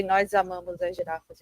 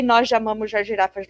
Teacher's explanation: You would say the Z sound instead of the sh sound.